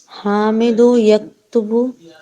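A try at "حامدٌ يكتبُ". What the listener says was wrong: हामिदो नहीं कहेंगे, हामिदुन ना, हामिदुन, हामिदुन यक्तुबु दरसा, हामिद लिखता है दर्स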